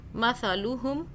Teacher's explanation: اس والے سا کو سافٹ ادا کرنا ہے، زبان کو ہلکا سا باہر کر کے اس کو ادا کریں